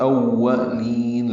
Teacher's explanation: لام ساکن پہ اظہار ہے، اظہار قمری، حمزہ کو واو سے ملائیں گے، حمزہ واو جلدی پڑھیں گے۔